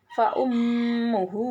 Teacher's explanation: Apabila ada huruf ha damir yang huruf sebelumnya hidup atau berharakat sehingga panjang bacaannya sebanyak satu Alif atau dua harakat atau dua tempo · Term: Mad Silah qasirah